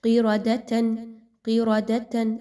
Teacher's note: قیرادتن، قیرادتن، قاف موٹا حرف ہے اور را کے اوپر زبر ہے، دونوں کو پر پڑھا جائے گا، لیکن دال اور تا ان دونوں کی ادائیگی باریک رکھی جائے گی